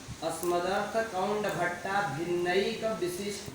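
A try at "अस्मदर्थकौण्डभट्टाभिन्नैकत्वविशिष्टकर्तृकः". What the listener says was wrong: भिन्नैक तुम्हारा दद्दा होगा, भिन्नैकत्व विशिष्ट बोलो।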